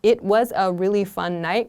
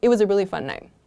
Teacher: the T kind of gets really, really soft and really short there